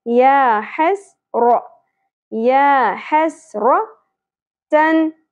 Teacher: हा वस्ते हलक से, सीन सीटी के साथ